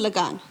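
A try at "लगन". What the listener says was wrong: But Lagan, the A is pronounced longer.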